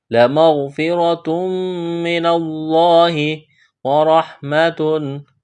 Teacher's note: تنوین کے بعد میم مشدد ہے، یہاں ادغام کریں گے، غنہ کریں گے، آواز ناک میں چھپائیں گے